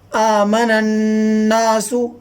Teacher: وَإِذَا قِيلَ لَهُمْ آمِنُوا كَمَا آمَنَ النَّاسُ، جہاں بھی نون کے اوپر یہ شوشہ ہوتے ہیں یہ، تو وہ نون یعنی نون مشدد کو غنہ ہوتا ہے اس کے اندر، یعنی اس نون کی آواز ناک میں جاتی ہے